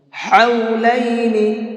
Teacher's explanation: یہ بڑا ہا ہے، اس کو درمیانی حلق سے نکال کر کے پڑھیں گے